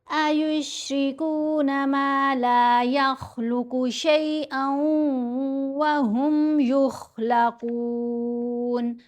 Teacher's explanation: ख और क़ाफ दोनों को यहाँ हमने मोटा पढ़ा। ये हरूफ मुस्तालिया में से हैं।